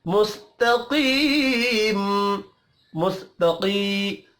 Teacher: قاف حروف مستعلیہ ہے، پر پڑھا جائے گا